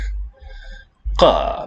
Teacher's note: Qa, picture of a hill slope. This was like the Qaf in classical Arabic, voiceless uvular stop.